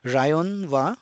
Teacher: is written in Katakana because it's an English word lion and since there is no La sound in Japanese so it gets replaced with the r sound